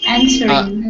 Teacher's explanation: Answering, the stress is on and.